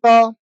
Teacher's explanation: जब आप त बोलेंगे तो आप इस पर महसूस करेंगे कि जो जीभ है ना आपकी वो किसको टच कर रही है, दांतों को टच कर रही है।